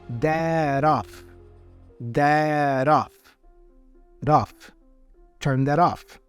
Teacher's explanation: the T for that is actually joined with a vowel o in off and the sound here is kind of a flap sound a flap T sound so that off dead off turn that